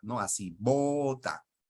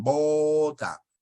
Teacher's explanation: cuando tú pronuncias bota qué es lo que ocurre se cierran los labios cierto